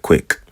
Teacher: it's like a clicking Q sound or a clicking K sound instead of it just being a hard K